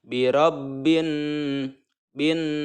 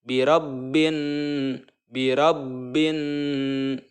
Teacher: ya Nun yang bertasydid ini adalah ghunnah ya mengenai guna-guna itu cara membacanya harus mendengung dan menahan dengungan itu selama 2/3 harokat